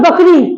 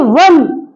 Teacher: जब हम बोलते हैं वन तो जो व बोलते हैं वो दांत और ओष्ठ दोनों से बोलता है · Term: दंत ओष्ठ